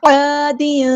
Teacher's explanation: تنوین کی آواز کو چھپا دیں گے، یہاں پہ اخفا ہو رہا ہے